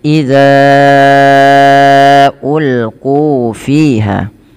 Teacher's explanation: Bila kita perhatikan pada lafal idza ulquu fiha, di sini pada lafal dalal ya, hati-hati jangan sampai terbaca dengan zat ya atau dengan zai jangan dibaca iza. Dan panjangkan huruf dza di sini sepanjang empat atau lima harakat karena ia ada mad jaiz munfasil